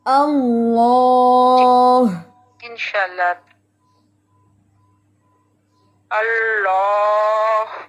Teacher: زبان صرف نوک نہیں اٹھانی, زبان کا وسط بھی اٹھائیں, زبان کی جڑ بھی اٹھائیں, پھر انشاءاللہ یہ ہیوی ہوتا ہے